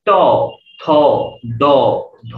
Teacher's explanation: এই ত, থ, দ, ধ যখন আপনি বলছেন তখন আপনার জিহ্বা আলটিমেটলি দাঁতকে স্পর্শ করছে। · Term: দন্তবর্ণ